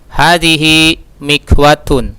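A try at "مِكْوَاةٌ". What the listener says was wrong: Mikwatun, agak panjang.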